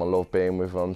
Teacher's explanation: he pronounces the th in with as V which is typical in quite a few British accents